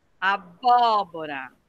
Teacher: O bó, abóbora. Então, a tônica tá no bó.